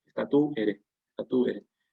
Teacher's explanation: El acento no va a ir en la E, sino en la U, en sílabas diferentes. Que hay hiato ahí.